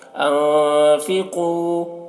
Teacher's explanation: قاف کو پر پڑھیں گے، قاف حروف مستعلیہ میں سے ہے